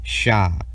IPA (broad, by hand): ʃ